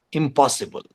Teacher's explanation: is definitely assimilation between Ma and between Na and Pa so the place of articulation of PA which is the first sound of possible has its impact on the negative prefix